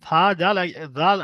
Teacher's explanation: জাল আর সা একই জায়গায় মাখরাজ, আপনার জিভের আগা আর উপরে দাঁতের আগার সঙ্গে